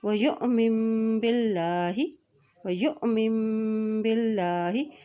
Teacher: हमज़ा के ऊपर जज़म है, हमज़ा साकिन है तो यहाँ पे झटका देके अदा करेंगे। ठीक है, और अल्लाह के नाम से पहले ज़ेर आ गया है तो यहाँ पर अल्लाह का नाम भी बारीक अता किया जाएगा।